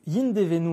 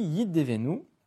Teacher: Donc, yin devenu normalement, mais ici, yid devenu, élision, disparition du nun